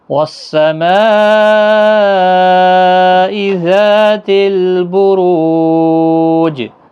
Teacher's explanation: جیم ساکن جب ہوگا اس پر قلقلہ بھی ہوگا، 3 سے 5 الف کی مقدار کے برابر کھینچ کر وقف بھی ہوگا۔